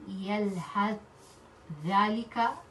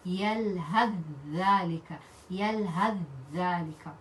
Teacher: the first one becomes silent and the second one becomes with shadda. So instead of reading yalhad dhalika, yalhad by stopping at sakin, we're going to merge by reading it with dal with shadda, and that will be yalhad dhalika, yalhad dhalika. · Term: idgham